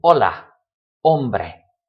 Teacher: it's completely silent the H does nothing it's just decorative it's there because of tradition or to stop